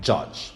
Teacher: the air is exactly blocked by raising the front part of the tongue to the palate so that's why we give them the name palatals or alveopathy